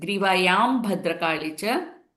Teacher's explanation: So Papha Babhama family. Anuswara followed by Papha Babhama will stay as M sound.